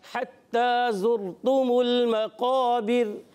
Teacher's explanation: ता मुशद्दद है, ज़रा रुक कर अदा करेंगे, खड़ी हरकत को एक अलिफ खींचेंगे। जा सीटी के साथ अदा करेंगे, जाल नहीं करना। और रा साकिन से पहले पेश आया, पुर पढ़ेंगे।